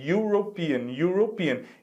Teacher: A gente pode até dizer que seria o som do I, mas you, em inglês, a pronúncia you começa com Y, não é mesmo? Então, é como se a gente estivesse ouvindo primeiro o som de Y, European. E Y, como não faz parte das nossas 5 vogais, é uma consoante.